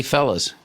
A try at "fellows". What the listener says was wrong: You said fellas, not fellows. Yeah.